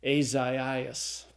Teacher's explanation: So we put the two dots, the diaeresis, over the second vowel to say this isn't a diphthong. It's actually two vowels. And what's going to happen is that you'll syllabify between those two vowels.